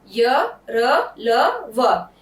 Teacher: इसमें हमारी जीवा कहीं भी नहीं टच कर रही है।